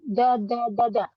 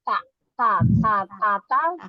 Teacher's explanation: Dal itu sama persis tempatnya dengan Ta